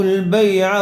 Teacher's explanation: بیع عین کے اوپر زبر ہے اس لیے عین کو جلدی پڑھیں گے کھینچیں گے نہیں